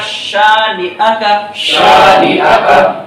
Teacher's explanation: صرف ہمیں شین جو پہلا ہمارا حرف ہے اسے ہم کھینچ کے پڑھیں گے، باقی ان تین حروف کو ہم کیسے پڑھیں گے؟ بغیر کھینچے پڑھیں گے۔